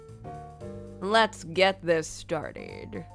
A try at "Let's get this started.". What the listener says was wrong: A bit deeper on your throat. A little.